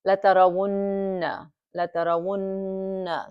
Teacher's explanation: we hold it for 2 beats. The nasal sound is coming, and that's the proper way to read noon mushaddada bi ghunna.